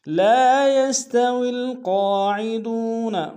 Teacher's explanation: لام کے ساتھ الف مدہ ہے، ایک اختیار میں کھینچیں گے۔ یستوی میں واو کو لام کے سامنے آئیں گے، ونانیوں کا لام ساکن میں، قوف کے اوپر کھڑا زبر ہے، ایک اختیار میں کھینچیں گے، قوف موٹا ادا کریں گے، دال کو واو کے سامنے آئیں گے، واو مدہ ایک اختیار میں کھینچیں گے۔